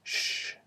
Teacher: So option number one, you can choose either a voiced zh, where vibration travels over the blade of the tongue, or an unvoiced sh consonant sound, where air travels over the blade of the tongue